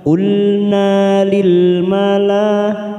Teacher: ada mad yang bertemu dengan hamzah dalam satu kalimat, mad wajib mutasil, 4 harokat kita panjangkan